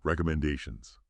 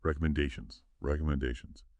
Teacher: Pay attention to the rhythm. The stress. It falls on the fourth syllable.